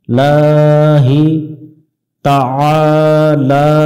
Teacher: আ গলা চেপে উচ্চারণ হবে এবং এক আলিফ টানতে হবে